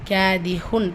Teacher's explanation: காஃப்ல என்ன இருக்கு அலிஃப் மதா இரண்டாவது ரக்கத்து அளவு நீட்டம் கொடுங்க